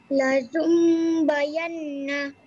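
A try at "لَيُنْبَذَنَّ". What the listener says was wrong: Bazan, bukan bayan Tengok huruf zal.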